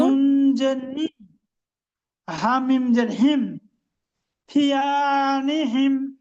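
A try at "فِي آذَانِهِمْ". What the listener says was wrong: জি মাশাআল্লাহ মাশাআল্লাহ, আর একবার পড়ুন।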